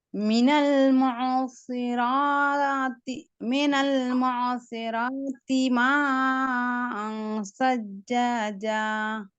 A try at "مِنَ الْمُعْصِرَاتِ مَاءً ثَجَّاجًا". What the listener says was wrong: அண்ட் sound தெளிவாக வாரது போதாது, இந்த தீ நீட்டுப்படுது. That's wrong.